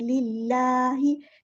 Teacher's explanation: अल्लाह का जो लाम है ना, हम यहाँ पर बारीक पढ़ेंगे, क्योंकि इससे पहले ज़ेर आई है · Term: जलाला तरक़ीक़